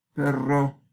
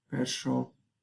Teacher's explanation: el ensordecimiento de la R pierde la cualidad de sonoridad. Entonces, en vez de perro, la gente es capaz de decir perro, algo así.